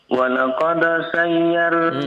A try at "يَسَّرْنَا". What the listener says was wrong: Nah, terbalik kayaknya itu hurufnya.